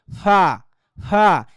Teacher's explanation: উপরের ঠোঁটের সাথে নিচের ঠোঁট লাগবে না, মাঝখান দিয়ে ভিতর থেকে হাওয়া বাইরে বের হয়ে যাবে, ফা ফা। যারা আরবি পড়ছেন, আরবি মাখরাজটা যারা পড়ছেন, আরবি যারা ফা পড়ছেন, ওই ফায়ের সাথে এফার পুরা মিল, আরবি খয়ের সাথে ইংলিশ খয়ের পুরা মিল। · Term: এফের উচ্চারণ